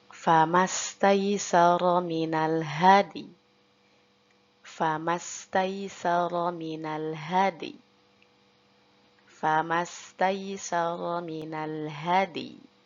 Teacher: huruf dalnya tetap kita kolkolahkan, lalu huruf ya-nya kita isyaratkan dengan bibir yang meringis